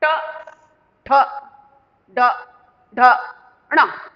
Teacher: जब हम इनको बोल रहे हैं तो हमारी ये जो जीभ है, ये जीभ ऊपर जाकर मुड़ जाती है। आप बोलो ट, जीभ तालु के साथ टकराती है और फिर ऊपर से मुड़ जाती है नोक उसकी, तब जाकर ये ध्वनिया निकल रही है, निकल रही है ना। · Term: मूर्धन्य ध्वनिया